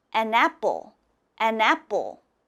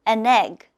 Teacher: when you have an in front it has to sound almost like one word